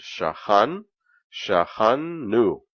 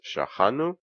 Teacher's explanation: plural we so uh we have the word shahan new so you have two noons in a row what happens they combine become one and it simply is shahanu and there is a dogish orte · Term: assimilation